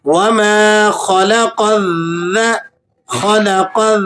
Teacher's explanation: ख भी आपने मोटा पढ़ना है और कफ भी आपने मोटा पढ़ना है · وما، اس کو آپ نے 1-2 سیکنڈ تک کھینچنا ہے۔ خلق، خا بھی آپ نے موٹا پڑھنا ہے اور قوف بھی آپ نے موٹا پڑھنا ہے